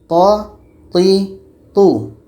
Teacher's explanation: Ta ini letaknya pada ujung lidah menempel dengan pangkal gigi seri atas. Ujung lidah menempel dengan pangkal gigi seri atas. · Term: tho